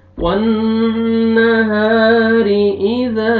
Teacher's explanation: اذا یغشا، واللیل اذا یغشا، والنہار اذا تجلی، والنہار، نون مشدد غنہ کریں گے، الف مدہ، الف سے پہلے فتحہ، ہا کو آپ نے کھینچنا ہے، را کو باریک کر کے پڑھیں گے، را نیچے کسرہ ہے